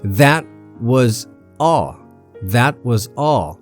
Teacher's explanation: Here, that and all. These 2 words are stressed. The verb was is weak here.